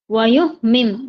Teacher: یہاں پر پھر سے آ گیا حمزہ ساکن، جھٹکا آئے گا